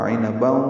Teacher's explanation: تنوین کے بعد واو آنے کی وجہ سے ادغام ناقص ہے، غنہ ہوگا